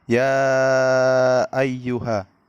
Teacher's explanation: Pada ayat ya ayyuha, karena ya berharokat fathah diikuti alif bertemu dengan hamzah di lain kata. Cara membacanya panjang selama 2-5 harokat. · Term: Mad Jaiz munfasil, mad jaiz munfasil